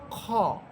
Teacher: খ হরফের মাখরাজ হচ্ছে কণ্ঠনালীর একেবারে শেষ প্রান্ত, কণ্ঠনালীর একেবারে শেষ, অর্থাৎ গলার একেবারে শেষ সীমানা, ওইখান থেকে খ হরফটা উচ্চারিত হবে।